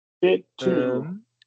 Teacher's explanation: You're going to combine those T's right there. One word. Bit to.